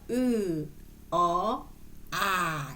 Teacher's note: 내려 요 그다음에 평수 몸 보시면 으 어 아 이렇게 혀 혀의 위치가 고중 저로 달라지죠